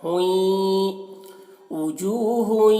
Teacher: हुई यहाँ पर गुन्नत में हुई, इस तरह हुई गुन्ना हो रहा है तो इसकी आवाज़ नाक में जा रही है।